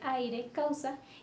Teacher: Unimos una vocal abierta a una vocal cerrada, en el caso de aire, causa, entonces no se pueden separar las vocales. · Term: dictongo